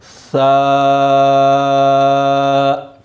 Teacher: زبان کی نوک سامنے والے اوپر والے دانتوں کے کنارے سے لگے تو سا ادا ہوتا ہے۔ سا، اچھا، سا کو ادا کرتے وقت آپ نے اس بات کا خاص خیال رکھنا ہے کہ سیٹی کی آواز کسی صورت بھی نہ نکلے۔